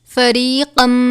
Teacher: تنوین کے بعد میم مشدد ہے تو ہم اس پر غنہ کریں گے